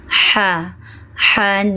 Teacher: Huruf 'h' berasal dari bagian tengah tenggorokan.